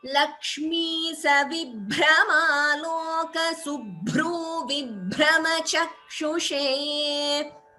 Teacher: So bha, bhra, bhru and bhra again all are mahapranas.